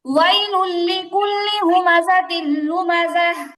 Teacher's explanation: তানবিনের পরে লাম ইদগামে বেলা গুন্না, গুন্না ছাড়া মিলায় করতে হবে